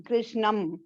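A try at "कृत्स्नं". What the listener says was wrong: कृष्णं कृष्णம் இல்ல, அது கிருஷ்ணா அது கிடையாது. மீட்டர் ராங் हो गया, பரவாயில்லை. கிருஷ்ணம்லதான் ப்ராப்ளம் ஆயிடுச்சு, பரவாயில்லை.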